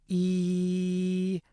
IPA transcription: i